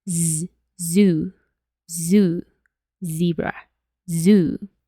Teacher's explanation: esta Igualmente es voiced Entonces qué significa que hay una vibración es como hacer una s pero nuestra garganta tiene que vibrar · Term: la Z